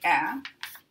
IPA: æ